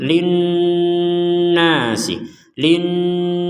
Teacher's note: maka kita dengungkan linas linasi jadi kita memberikan jeda dua harakat ya panjangnya sekitar dua harakat untuk dengungannya